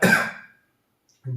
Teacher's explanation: इनका उच्चारण करते समय जीभ पहले पीछे की ओर जाती है, फिर तेजी से आगे की ओर जाती है, इसीलिए इन्हें उत्क्षिप्त व्यंजन कहा जाता है।